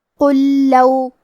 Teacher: یہاں حکم ہے ادغام مثلین تام، اور ادغام کا معنی ہے حرف کو حرف میں داخل کرنا، تو ہم لام ساکن کو دوسرے لام میں ملا کے ایک ہی لام اور تشدید کے ساتھ پڑھیں گے